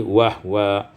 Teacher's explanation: Terakhir pada ayat 120, wa huwa iskanul ha, disukunkan ha menjadi wahwa